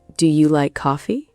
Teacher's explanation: In English, when you ask a yes no question, your voice usually goes up at the end. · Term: Intonation